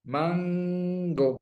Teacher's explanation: La velar solo la tenemos en ciertos contextos como la de mango. La primera nasal de mango, es velar. · No sube la punta de la lengua, como al decir manto.